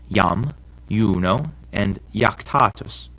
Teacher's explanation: if a word begins with an i and the next letter is a vowel like in these words it's actually a consonant and sounds like our y